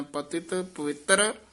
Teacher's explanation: ਪਤਿਤ ਪਤ ਤੇ ਵੀ ਥੋੜਾ ਜਾ ਠਹਿਰਾ ਦੇ ਕੇ ਬੋਲਣਾ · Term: ਠਮਕ